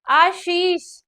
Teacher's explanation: पहले कि कैसे जो यह वाली तालव्य वाली श है जब हम बोलेंगे तो कैसे बोलेंगे श एक सीधी टाइप में हल्की सी निकलेगी जैसे हमने किसी का नाम लिखा जैसे हमने लिखा आ शीश तो आप सभी आशीष जैसे शब्द बोल के देखिए बोल के देखिए आशीष छोटी सी सीटी की जरूर आवाज निकलेगी